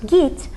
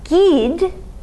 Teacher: That t is going to undergo consonant alternation with d